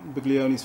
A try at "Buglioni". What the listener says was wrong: The G is silent.